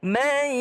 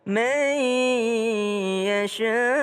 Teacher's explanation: ada nun ketemu dengan ya. Mai. Ya, berdengung. Mai yasha.